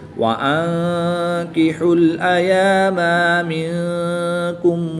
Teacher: نون ساکن کے بعد کاف حروف اخفا میں سے ہے، تو یہاں پر بھی اخفا ہوگا، یعنی غنہ زمانی کر کے پڑھیں گے